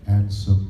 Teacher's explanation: What's happening is I'm pronouncing all the way through, and I'm holding my Z's longer, like that. Ansem, I'm holding my nasal resonators longer too.